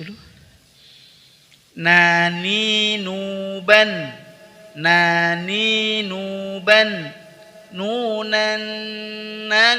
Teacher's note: huruf nun dikeluarkan dengan cara menyentuhkan ujung lidah pada gusi dua gigi seri atas